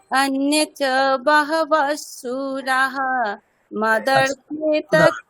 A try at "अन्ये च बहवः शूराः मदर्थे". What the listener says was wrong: এই সুরা এখানে বিসর্গ নেই, আপনি বিসর্গ উচ্চারণ করছেন। না না বিসর্গটা নেই, আসলে শ্লোকে নেই, এখানে সন্ধি করা আছে। আপনি যেহেতু ওটা ওখান থেকে বিচ্ছেদ করে পড়ছেন বলে বিসর্গটা ঠিকই পড়ছেন।